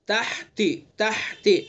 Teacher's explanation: ہا کو حلق سے ادا کریں گے، زبان حلق کے بیچ سے